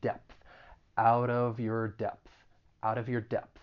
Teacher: it ends with that voiceless th it's very slight but you should pronounce that voiceless th